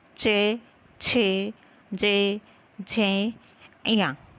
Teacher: हमारी जीभ का स्पर्श कहाँ हुआ? तालव्य से।